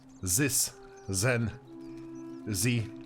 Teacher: english is that with that this and generally the th sound they don't say the that this then but they more go with an s sound